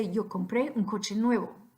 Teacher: I'm raising my raising my voice at the end